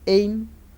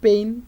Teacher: the lips are spread, and that's why the position of lips is unrounded. So it is called unrounded vowel.